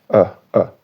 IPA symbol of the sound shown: ə